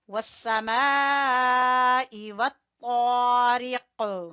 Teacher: والسماء والطارق، ٹھیک ہے؟ رکنے کی صورت میں ہم قلقلہ کریں گے قاف کے اوپر، اور اگر نہیں رکتے تو پھر قلقلہ نہیں ہوگا، کیونکہ قلقلہ ہمیشہ وقف کی صورت میں ہوتا ہے۔ · طا حروف مستعلیہ میں سے ہے، پر پڑھا جانے والا ہے، اور کھینچیں گے بھی الف مدہ کی وجہ سے۔